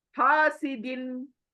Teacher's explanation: हासिन clear पढ़ रही हूं ना मैं नाक में नहीं छुपा रही हूं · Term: इजहार